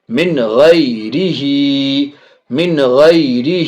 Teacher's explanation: ناک میں آواز نہیں جائے گی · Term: اظہار